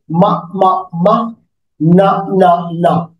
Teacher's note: So that is the sound, is a nasal sound, right? Nasal sound is coming over through the nose, and there is a M sound and N sound. Both sound is coming through the nose.